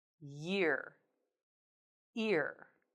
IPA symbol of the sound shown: j